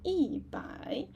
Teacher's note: originally actually E is a flat tone, first tone. But, here you can see E change to a falling tone.